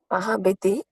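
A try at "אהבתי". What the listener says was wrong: Ahavji. It is not Ahaviti, it is Ahavji. That's silent Shiva.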